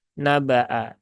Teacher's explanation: baknya tidak dibaca panjang ya, tetapi cukup dibaca dengan qasar atau dengan 1 harokat saja